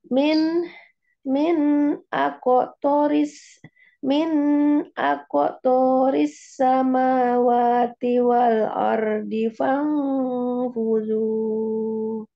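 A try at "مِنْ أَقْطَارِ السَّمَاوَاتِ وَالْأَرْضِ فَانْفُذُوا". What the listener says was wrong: Afan, toknya panjang bun ya. lupa ada alifnya.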